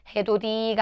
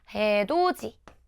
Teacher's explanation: 디귿이 지읒으로 소리 나는 거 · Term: 구개음화